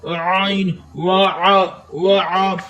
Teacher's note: آئین، آئین کے اوپر زبر ہے، آئین کو بغیر کھینچے پڑھیں گے، مگر آئین کا جو لفظ ہے وہ حلق کے درمیانے حصے سے ادا ہوتا ہے